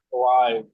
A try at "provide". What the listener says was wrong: provide. Don't just have your tongue right in the middle of your mouth. Provide.